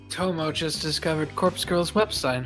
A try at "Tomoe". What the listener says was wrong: There is an E pronounced Tomoe.